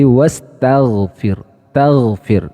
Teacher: wastagfir itu adalah syiddah jadi suaranya tahan namun dari sisi sifat huruf gain itu memiliki sifat rakhawah atau mengalirnya suara saat mengucapkan hurufnya